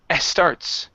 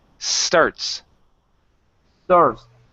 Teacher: take off the e sound at the beginning